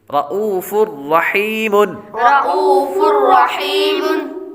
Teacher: آگے فا پر تنوین ہے، تنوین کے بعد را حروف یرملون میں سے آ رہا ہے اس لیے غنہ نہیں کریں گے۔ ہا کے بعد یا حروف مدہ میں سے ہے اس لیے اس کو ایک الف یعنی 2 حرکات کے برابر لمبا کریں گے · را موٹا ہے پر پڑھیں گے را کو، را پر زبر ہو تو را کو پر پڑھا جاتا ہے